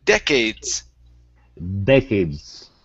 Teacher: Next up is the word decades. The stress is at the very beginning.